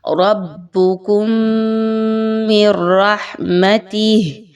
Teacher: کیجئے، فَأْوُوا إِلَى الْكَهْفِ يَنشُرْ لَكُمْ رَبُّكُمْ مِنْ رَحْمَتِهِ، رَبُّكُمْ، میم ساکن کے بعد میم، اچھے سے غنہ کیجئے